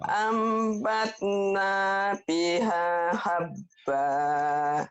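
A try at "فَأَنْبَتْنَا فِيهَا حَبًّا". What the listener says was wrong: Pi-nya panjang nih. Ambatna fiha habba. Coba pelan-pelan. Fa'ambatna fiha habba. Fa'ambatna fiha Habba.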